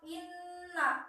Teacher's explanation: Karena nun bertasdid, cara bacanya ditahan dan didengungkan. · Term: gunah musyaddad